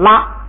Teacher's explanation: 拉本来是2声，是声调，它挂成下夹字之后，就是它上边带一个帽啊，它就变成平声了，变成1声了